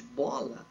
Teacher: o ar tem que ressoar inteiramente na boca no primeiro segmento de bola, ao invés de ressoar pelas fossas nasais para não sair a palavra mola